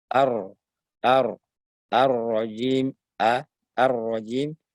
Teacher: huruf tebal ra ditebalkan, berikan getar sedikit. Ya, bukan getarnya yang banyak, bukan ar-rajim, tapi cukup ar-rajim, ar-rajim, tipis sama dengan alhamdulillah, bukan ar-rajim, ar-rajim. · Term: ra yang tebal